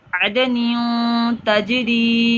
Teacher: تنوین کے بعد تا ہے، تا حروف اکفا میں سے ہے، گنہ کریں گے